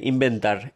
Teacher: The B is a strong B. Why? Because there is a nasal sound before it. So the nasal sound conditions the B to be strong.